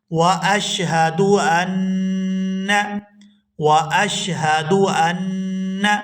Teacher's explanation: یہاں نون مشدد پر غنہ کریں گے